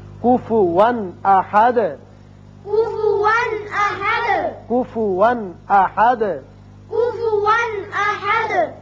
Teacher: کفوا 2 زبر تنوین ہے لیکن آگے حمزہ بشکل الف آ گیا جو کہ حروف حلقی میں سے ہے، لہذا یہاں اظہار حلقی ہوگا